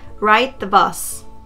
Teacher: looks like I'm dropping the D sound